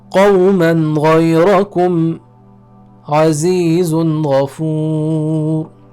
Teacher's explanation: the Noon is precise and clear. There is no extra elongation or nasal sound necessary.